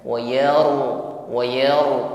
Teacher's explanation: dalam menebalkan bunyi ro tetap ada sifat takrir yaitu getar di ujung lidah wayar wayar tidak sekedar tebal Wau Wau tebal namun getarannya hilang